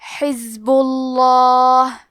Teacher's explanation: تفخیم، تو ہم حرف اللام کو موٹی آواز میں پڑھیں گے